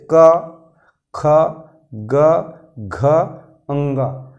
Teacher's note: कंठ से जैसे क, ख, ग, घ, अंग, आप बोल के देखिए तो यहाँ पर ऐसे लगता है जैसे कंठ थोड़ा सिकुड़ रहा है और फिर वहीं से आवाज निकल रहा है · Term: कंठ वर्ग